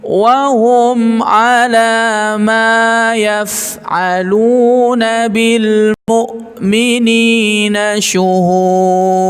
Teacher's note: Wa hum 'ala ma dua harakat ya. Jangan nanti kepanjangan. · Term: mat tabi'inya